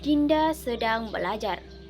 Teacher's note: nada yang digunakan dalam intonasi barita berupa nada datar, menurun, dan menunjukkan informasi